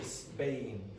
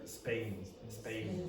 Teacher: It's an unaspirated P. Okay? And because of that, it sounds like a B.